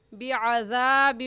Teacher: عین کی جگہ حمزہ بعذابیوں بھی غلط ہے، بلکہ عین نکالے، عین حلق کے درمیانی حصے سے نکلتا ہے